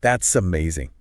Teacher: really focusing on the vibration of that Z sound, linking the words together. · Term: Z buzz